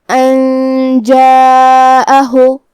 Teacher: مد واجب متصل میں ہم اپنی آواز 4 مد کے برابر لمبی کریں گے · اخفاء کا معنی ہے حرف کو چھپانا، تو ہمیں نون ساکن کو چھپاتے ہوئے بغیر ظاہر کیے ہوئے لیکن غنہ کے ساتھ یہ حکم کو ادا کرنا ہے